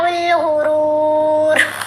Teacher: غین را دونوں جگہ را کو موٹا پڑھا جائے گا